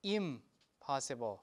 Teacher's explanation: the natural phonological process that happens here is assimilation so people pronounce it as im possible · the original morpheme is in, and it changes to im because of the following consonant, which is the bilabial sound. Okay?